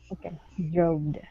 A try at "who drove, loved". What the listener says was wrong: Okay, without a D. So who drove, loved. Yeah, so you're adding an ed ending saying droved. Okay, instead of droved, it's going to be who drove, loved.